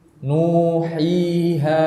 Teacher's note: maka suara yang keluar ini keluarnya dari al-jawf, yaitu rongga tenggorokan dan rongga apa? Mulut. Maka kita harus membuka kedua rongga tadi, tidak boleh kita tutup. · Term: huruf mad